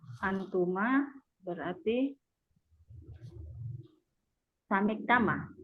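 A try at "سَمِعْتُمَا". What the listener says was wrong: Bukan tama. Harokatnya salah. Ya, antuma kan tuma, dhamma fathah, bukan tama. Ya, sami'tuma.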